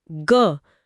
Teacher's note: लेकिन अगर मैं ग बोलती हूँ, ग, तो उंगलियों के नीचे एक साफ भिनभिनाहट या वाइब्रेशन महसूस हो रहा है। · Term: सघोष